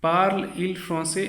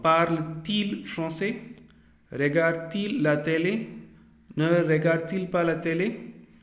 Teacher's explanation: when there are two vowels meeting each other, you have to introduce a T. This happens only between the verb and the subject.